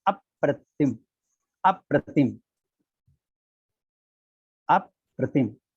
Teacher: प्र के आग्रह से आ जो है वो गुरु हो गया